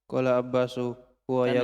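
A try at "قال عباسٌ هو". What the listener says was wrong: Tanwin. Sun.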